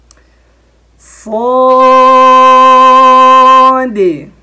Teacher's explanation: صاد کو ادا کرتے ہوئے اس میں بھی ایک آواز آتی ہے س، اس کو بولتے ہیں صفت صفیر۔ جب بھی آپ صاد کو ادا کریں صفت صفیر کے ساتھ ادا کریں، کیسے ہیں، صاد۔